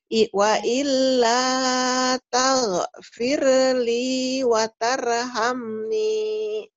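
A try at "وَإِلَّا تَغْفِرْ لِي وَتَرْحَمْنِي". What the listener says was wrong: Ya, roknya kayak apa ya, terlalu banyak getaran atau hampir mendekati ada e-nya. Tapi yang enggak sama. Yang tadi fir Taghfirli wa tar, iya, firnya.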